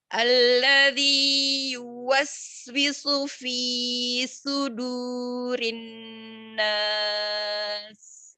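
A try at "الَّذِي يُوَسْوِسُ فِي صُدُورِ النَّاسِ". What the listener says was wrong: Ahsanti, lakin mat tabi'i di sini di fi itu terlalu panjang, mau lebih dipendekkan lagi ya Umi. Kemudian di sin sakin jangan ditekan. Enggak, dialihkan saja. Yuwaswisu fi sudurin nas.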